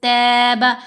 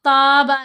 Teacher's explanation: تا کو باریک پڑھنا ہے، یوں اسمائلی فیس، تاب، تابا نہیں پڑھتے، پھر وہ آواز موٹی لگتی ہے.